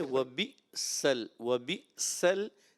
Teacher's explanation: حمزہ کو جھٹکے سے پڑھیں گے. وبئسل، وبئسل، سین باریک، صاد کو موٹا کریں گے اور پھر آخر میں را باریک کر دیں گے، ٹھیک ہے.